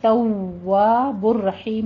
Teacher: ہوت توا, توا میں آپ نے تا کے پر بھی تشدید ادا کیجیے اور سختی کرتے ہوئے واو پہ بھی تشدید, دونوں ہونٹوں کو گول کر کے تواب الرحیم میں را کو پر پڑھنا ہے, ہا وسط حلق سے ادا کرنا ہے